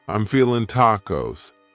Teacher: cutting off that g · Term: reduction